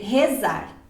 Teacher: O meu sotaque é com a vogal fechada mesmo, né?